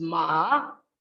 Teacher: ma with low or falling then rising pitch